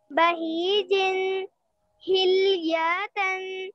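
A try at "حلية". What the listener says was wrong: Hilyatan, don't extend. Hilyatan, Hilyatan.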